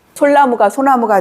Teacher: 리을과 니은은 함께 발음할 수 없습니다. 이게 한국어의 특징입니다.